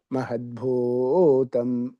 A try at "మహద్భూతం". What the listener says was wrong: మా అనుదాత్తం చెబుతున్నారుగా.